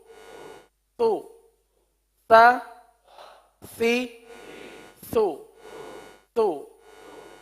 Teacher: स में पहले तो जबान का सिरा लग रहा है उसके अपने मखर पर यानी ऊपर के दांतों के अंदरूनी किनारे पर और लगने के बाद फौरन ही होट गोल हो रहे हैं और फिर अपनी असली हालत में आ रहे हैं तो तो